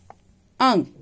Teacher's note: अंग इसे अनुस्वार कहते हैं। इसका उच्चारण जो है वो नाक से होता है।